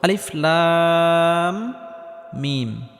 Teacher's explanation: এখানে লামটি 4 আলিফ পরিমাণ লম্বা করে টানতে হবে, কারণ কোনো হরফের উপর যদি মোটা চিহ্ন থাকে তাহলে সেই হরফটি 4 আলিফ পরিমাণ লম্বা করে টেনে পড়তে হয়। · এই লাম হরফটি 4 আলিফ পরিমাণ লম্বা করে টানার পর মিম হরফটির সাথে গিয়ে লাগবে, কারণ মিমের উপর তাসদিদ রয়েছে। আর মিমটি গুন্নাহ করে পড়তে হবে, কারণ মিমে বা নুনে তাসদিদ হলে গুন্নাহ করে পড়তে হয়।